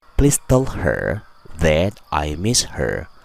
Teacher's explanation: Tell dan her jadi teller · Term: word connections